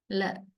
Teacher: there we use the tip of the tongue and we touch the alveolar ridge with the tip of the tongue. That is a place of articulation, alveolar. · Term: lateral